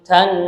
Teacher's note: Baca mendengung karena nonnya bertasydid